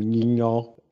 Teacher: eu tenho uma palavra como ninho, tentei aqui reproduzir um tom baixo